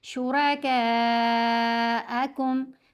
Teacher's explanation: مد متصل کو 6 حرکات کی مقدار لمبا کیا جائے گا. پڑھیں گے شُرَكَاءَكُمْ، پھر میم مشدد ہے، میم کے اوپر غنہ کرنا ہے.